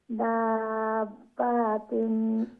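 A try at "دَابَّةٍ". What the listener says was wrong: বা লং হবে না, বা নরমাল।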